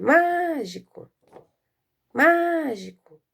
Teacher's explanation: Qual é a mais forte? É a sílaba má, certo?